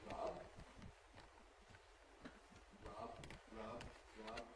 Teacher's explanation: we don't have to say it with full voicing.